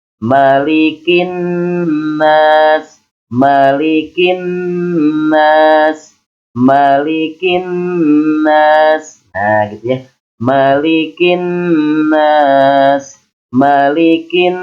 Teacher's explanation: suara yang mendengung luar dari pangkal hidung di dari pangkal hidung hamya nah itu yang disebut dengan gunas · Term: ghunnah musyaddadah